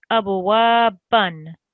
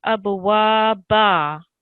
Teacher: if you're reading continuous, you would read abwaban. But if there's a stop, that changes to abwaba. Okay, so the tanween comes off.